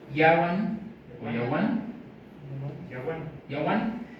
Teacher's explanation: Vean que la I está empezando a dejar de sonar con los purépechas